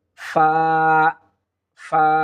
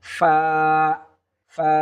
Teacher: উপরের দুই দাঁত নিচের ঠোঁটের পেটের সঙ্গে লাগিয়ে দিলে আমরা সহজে ফা হরফটি আমরা পেয়ে যাব। ফা ফা, এখানে আমরা অনেকে ভুল করে থাকি, ফা ফা অর্থাৎ দুই ঠোঁট মিলিয়ে দেই, কিন্তু এটা ভুল হবে।